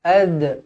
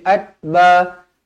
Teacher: Ad, qalqalah sughra dibaca melantun.